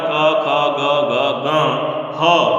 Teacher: कवर्ग क ख ग ग ग ह और विसर्ग, इनका उच्चारण स्थान कंठ होता है